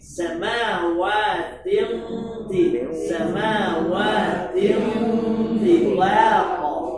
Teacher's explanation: Tafkhimul gunnah. Gunnahnya ditafkhimkan, menjemput huruf isti'la yang punya sifat tafkhim.